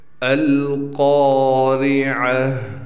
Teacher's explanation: را کو ہم باریک پڑھیں گے، اس بات کا بھی خیال کرنا ہے۔